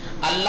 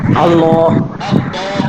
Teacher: پہلی بات تو لام کو درست یعنی موٹا اور پرحجم ادا کیا جائے گا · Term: تغلیظ